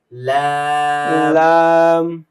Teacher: জিহ্বার আগাটা সামনের উপরে দুই দাঁতের গোড়ার সঙ্গে গিয়ে লাগবে